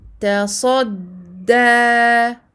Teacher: Sad emphatique. Mufakhamah. Dal aminci. Muraqqaqa. Ta fathata.